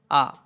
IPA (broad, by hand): ə